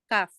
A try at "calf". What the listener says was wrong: Wala yung L. Sabihin mo lang yung calf.